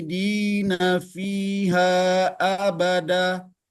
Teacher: Kho itu bahkan hampir seperti mengorok seperti itu